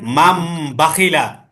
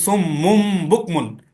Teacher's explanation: নুন সাকিন ও তানভিনের পরে যদি বা আসে, তাহলে ওই নুন সাকিন ও তানভিনকে মিম দ্বারা পরিবর্তন করে পড়তে হবে। এখানে তো আছে নুন, এখন আপনার নুনটা হয়ে যাবে মিম। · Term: ইকলাব